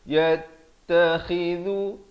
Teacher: khi khu di hujung kerongkong. Kha ni khi juga.